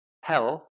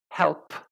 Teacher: if I say help you should feel the puff of air p is aspirated quite strongly and to produce the sound correctly you have to kind of release that air